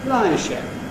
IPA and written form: l.aɪ–ʃ.e.p (lishep)